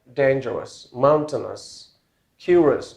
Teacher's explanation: most commonly OU, it gives a kind of schwa sound